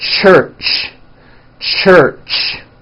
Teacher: when you put these two sounds together you get a CH it's an unvoiced sound and you can hear the sound for example at the beginning and at the end of the word church